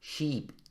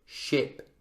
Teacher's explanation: ni siquiera es el mismo sonido vocálico, ¿sí? Es /i:ː/ y /ɪ/. SHIP, /ɪ/. sheep, /i:ː/.